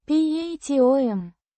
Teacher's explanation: With the stress on the second syllable.